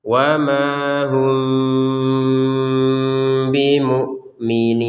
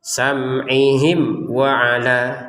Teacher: mim sukunnya bertemu dengan ba, dibaca dengan samar. Bimu'minin 2 harokat, 4 harokat atau 6 harokat sesuai dengan ketentuan awal-awalnya sebagaimana sebelumnya itu.